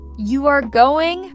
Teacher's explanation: rising, it becomes a question. If I say, you are going, falling strong, it becomes excitement or surprise.